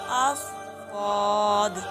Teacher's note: لوگ کئی طرف سے لگا سکتے ہیں، لیکن آپ بائیں طرف سے لگائیں، بائیں طرف سے آسانی سے لگتی ہے، اور دونوں طرف سے بھی نکلنا اس کا مشکل ہے، تو ہم پڑھیں گے بائیں طرف سے، جیسے آف آف ضاد۔ اس کے آخر میں قلقلہ ہوتا ہے